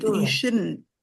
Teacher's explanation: the T is pronounced, but it's very soft. The N is the part that's going to identify you're like, oh, it's negative because they say you shouldn't go.